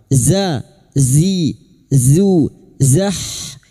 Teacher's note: huruf zain torful lisan atau ujung lidah sejajar gigi seri bawah